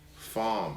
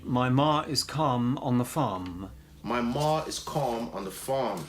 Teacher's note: no R when it's followed by a consonant, like in farm